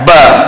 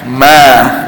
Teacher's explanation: Huruf ba kena tekan kuat, ba. Tapi huruf mim dia tak perlu tekan, ma lepas. Dan huruf mim juga makhraj dia ada bunyi ke hidung.